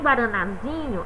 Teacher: Já em guaranazinho, a sílaba tônica é zi